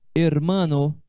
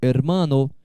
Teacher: O H em espanhol é uma letra sempre muda. O H é mudo, nunca tem som.